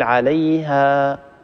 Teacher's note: نقول عليها، الصوت يتخامد ويقل شيئا فشيئا وينتهي، لكن لا نأتي في آخر صوت حرف المد بهمزة، لا نقول عليها، هذه الهمزة خطأ. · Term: حروف هوائية